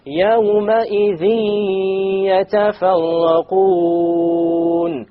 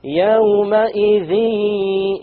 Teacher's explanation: There's a ghunna. Okay, and there is no clear end sound.